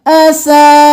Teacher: अब यहाँ पर सिर्फ हमने सीन ज़बर सा नहीं करना, साथ अलिफ को भी मिलाना है 5 अलिफ के बराबर खींचते हुए, क्योंकि ऊपर मद है